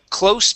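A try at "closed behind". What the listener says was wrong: behind. Close behind. Give me a D at the end.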